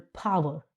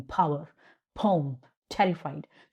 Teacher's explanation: तो पावर को बोलने में पी को बोलने में एस्पिरेटेड होती है। ये आप एक तरह से हवा मुंह से निकलती है। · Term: एस्पिरेटेड साउंड